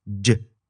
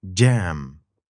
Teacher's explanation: this is a d and a j sound combined in one